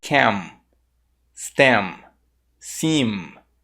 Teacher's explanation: boca aberta né assim também fica um som in em mas no inglês o som do m no final da palavra ele não é pronunciado dessa forma ele é pronunciado com a boca fechada · Você percebeu que no final, para pronunciar o M, eu fechei a boca?